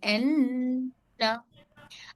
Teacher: नून को आवाज को नाक में ले जाकर घुमा कर पढ़ेंगे एन। अब हमको इससे कवायद से ये पता चलता कि नून साकिन के बाद हर्फ ता आया, हर्फ ता आया, तो नून की आवाज को कैसे अदा करना। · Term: नून पर तशदीद